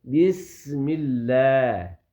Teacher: بسم اللہ میں سین ہے, اس کو سیٹی کی طرح پڑھیں گے